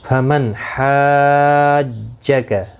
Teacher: نون ساکن کے بعد حرف حلقی کا حا آیا ہے، اظہار حلقی ہوگا، گنہ نہیں کریں گے